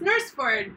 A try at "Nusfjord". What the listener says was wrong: Nusfjord. There's no R. There's no R. Nusfjord.